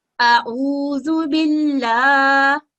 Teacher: इसके बाद बा के नीचे कसरा है, और इसको हम 1 सेकंड का वक्त देते हुए लाम के ऊपर तशदीद है, इसको मजबूती से मिलाते हुए, और उसके ऊपर हरकात इशबाइया है यानी फतह इशबाइया, और इसको 2 सेकंड का वक्त देते हुए अदा करेंगे, आऊज़ु बिल्लाह।